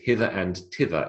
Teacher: The expression is hither and tither, even though we spell tither th. That's an example of a th which is pronounced t.